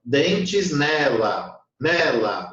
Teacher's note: dentes nela, o né é forte, o lá é fraco, então eu não conto.